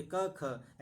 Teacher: तो ये प्रथम और द्वितीय वर्ण जो होते हैं अघोष होते हैं